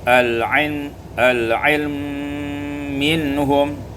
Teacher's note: dibaca idgham mim pada mim menjadi al-ilm minhum, disukunkan lam dulu ya, al-ilm minhum. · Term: idghamul mim fil mim